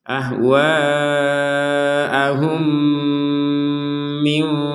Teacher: dilihat setelahnya mim maka dibacanya adalah masukkan mim yang pertama kepada mim yang kedua dengan dengungan